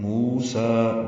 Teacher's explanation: موسیٰ واو مدہ اور کھڑا زبر قائم مقام مد اصلی الف مدہ، 2 حرکات لمبے کریں گے